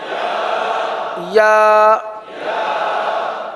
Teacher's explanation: زبان کا درمیان اور تالو کا درمیان